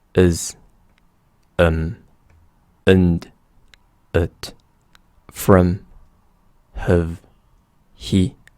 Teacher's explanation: most often the original vowels are reduced to the very weak schwa sound